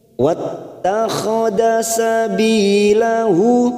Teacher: bi ada kasrah bertemu ya sukun, mat tabi'i 2 harokat kita panjangkan. Sabilahu, hu hadhamir yang berharokat dhamma terbalik, 2 harokat kita panjangkan, mat silah khosirah.